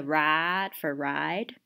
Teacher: people in the in the South, they'll have a lack of diphthong